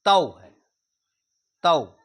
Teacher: तो ये तौ नहीं है संस्कृत में तऊ है तऊ क्योंकि आय और औ यह दोनों संयुक्त स्वर कहलाते हैं।